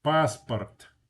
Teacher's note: The first A is stressed. The second vowel, the O is not stressed. When an O is not stressed, it's pronounced ah.